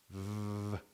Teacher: It's not explosive like the p or a different sound but it's very regulated. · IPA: /v/